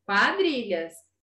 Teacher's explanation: Então, eu escuto o som do U e do A, certo? Então, isso é um ditongo, tá? O encontro de duas vogais na mesma sílaba.